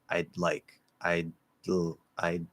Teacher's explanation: you don't move from the d to the l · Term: special link